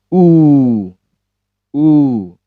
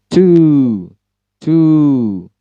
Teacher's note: U kemudian titik dua, tense, kuat atau panjang. Keterangannya yaitu cara bacanya monyong.